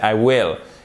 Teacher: Will, ça se prononce avec un i court, ok, qui est très proche du e accent aigu, même si c'est pas exactement la même chose, le accent aigu français, I will, et pas I will.